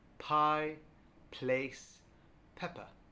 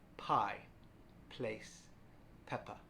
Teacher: The P sound is unvoiced, so we make the sound by gently closing our mouth and pushing air through our lips. · Just place your hand here gently, then say the word pie, place, pepper. And when you say these words, you should feel no vibration in your neck